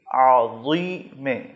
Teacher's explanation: تو اسے آپ نے موٹا کرنا ہے، زبان کی نوک سامنے والے دانتوں کے کنارے پر لگے گی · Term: ضائیں